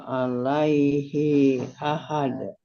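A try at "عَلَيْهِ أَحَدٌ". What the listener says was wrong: dari alaihi sekarang i-nya pendek alaihi ahad dengan hi tapi hi ahad hi-nya pendek hi ahad. Hi-nya pendek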